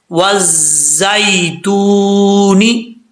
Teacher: जा जो है ये सीटी वाली जा है बगैर सीटी वाली नहीं है इसको सीटी के साथ पढ़ा जाएगा